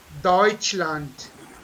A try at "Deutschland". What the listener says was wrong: Deutschland. It is not land. Again, I'm saying it is land. Yeah, this is land. Land. this is so, and this is what is this? This is soit.